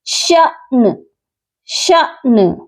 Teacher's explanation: نون پر ہم جب وقف کر رہے ہیں تو یہاں نون کو ساکن کیا جائے گا